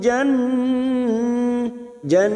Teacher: Nun yang bertasjid kita dengungkan dan ditahan selama t harakat Jan karena kita tadi WF di sini maka